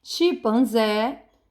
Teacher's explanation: Então, ela é uma oxítona, mas ela está acentuada. Chimpanzé está acentuada, e então a sílaba forte é zé.